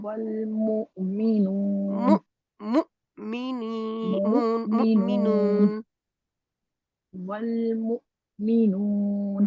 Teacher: میم کے لیے ہونٹ گول کریں بالکل، کیونکہ واؤ بھی آگے پیش جزم والی ہے · جھٹکا بھی لگتا ہے کیونکہ جزم والا حمزہ ہے